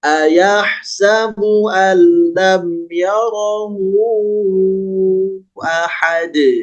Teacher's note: ketika diwaqaf tidak dibaca ahadu tapi jadi qalqalah ahad.